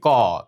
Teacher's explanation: সরাসরি এই কন্ঠ থেকে যে ব্যঞ্জন ধ্বনিগুলো আসবে সেগুলোকেই আমরা বলব কন্ঠ বা জীভা মূলীয়